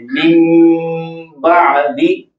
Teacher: इसको बदल देना है अपने मीम के साथ, मिम पढ़ा जाएगा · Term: इकलाब